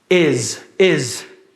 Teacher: Está escrito com S, mas o som é de Z.